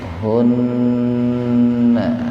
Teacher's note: gunnah itu nun atau mim yang bertasdid, artinya mendengung gunnah itu.